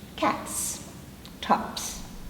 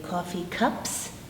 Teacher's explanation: Okay, if we consider some very common everyday nouns that you all have to use, we would say coffee cups. P doesn't vibrate, the S is air.